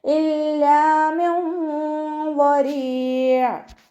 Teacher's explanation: നൂൻ സാക്കിനയ്ക്ക് ശേഷം ഇഖ്ഫാൻ്റെ അക്ഷരമായിട്ടുള്ള വാദ് വന്നു. നൂൻ സാക്കിനയെ മറച്ചു വെച്ചിട്ട് മണിച്ചോതി കൊടുക്കുക കേട്ടോ.